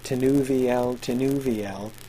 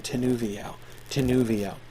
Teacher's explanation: Notice how her name, Tinuviel, Tinuviel, is perfect iambic tetrameter when repeated twice